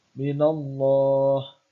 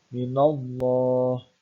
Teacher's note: bacaan tafkhim karena ada lafaz Allah atau lafzul jalalah didahului dengan harokat fathah, maka membacanya tebal